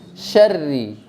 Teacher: Pertama pada huruf ro-nya, okay? Huruf ro. Itu jangan sampai bacanya dengan tafkhim atau tebal. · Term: tipis